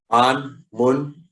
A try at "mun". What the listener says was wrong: An, mun, mun. Sound long. That sounds short, but when you said them in isolation, they sounded long.